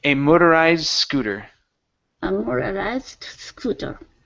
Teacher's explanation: connect the D and the S